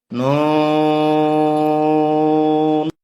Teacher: জিহ্বার আগে তালুতে লাগবে